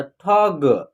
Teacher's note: जैसे हम आपको बता दें, यहाँ लिखा है आपको लिखना होगा ठग, तो ठ पूरा रहेगा ठ, उसके बाद ग, तो इसका उच्चारण कैसे होगा ठ का उच्चारण पूरा होगा, ग का उच्चारण हाफ होगा, यानी कम, इसका उच्चारण जो है ना आधा होगा, तो ठग, ठग नहीं पढ़ना है, ऐसे पढ़िएगा तो उच्चारण आपका गलत हो जाएगा, समझ रहे हैं।